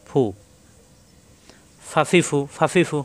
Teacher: উপরে 2 দাঁতের আগা, নিচে ঠোঁটের পেটে লাগবে। ফা একালি পরিমাণ টানা যাবে, হরকত আসলে দ্রুত।